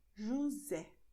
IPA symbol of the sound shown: z